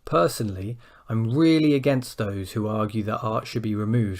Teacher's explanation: an up-down tone, which is when we want to express a lot of emotion